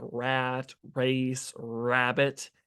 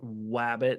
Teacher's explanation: the main thing you have to do is make sure your lips are spread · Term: initial R